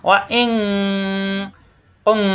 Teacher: এখানেও 2 হরফ মিলে উচ্চারণ হবে, কিন্তু এখানে নুন সাকিনের নিয়ম। তো নুন সাকিনের পরে কাফ ইকফা গুন্না হবে